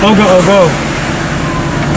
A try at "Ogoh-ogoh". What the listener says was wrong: kurang huruf H.